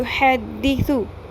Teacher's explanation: ثا کے اوپر پیش ثو لمبا نہیں کرنا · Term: سنگل حرکت